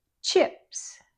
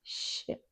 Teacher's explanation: The ch begins with an explosive t sound, but sh begins with just air flowing. Then the air flows freely.